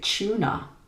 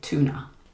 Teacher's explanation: In British English, if a T comes before a long oo sound, it changes to a ch sound. But in American English, the t sound stays the same.